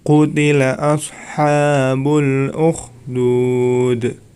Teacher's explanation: Di akhir ayat bacaan qalqalah dipantulkan cara membacanya.